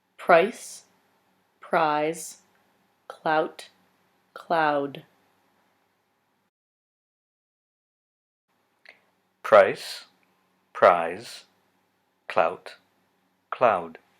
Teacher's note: particularly before voiceless consonant so for me and perhaps for you the diphthongs in clout will be higher than the diphthong in cloud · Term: Canadian raising